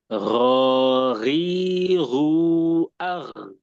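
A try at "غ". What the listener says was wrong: Jangan kecampur sama kho, hilangin kho-nya. Jadi murni ghain.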